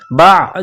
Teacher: आईन जो गले से निकलती है जोर लगाकर आन को निकाला जाता है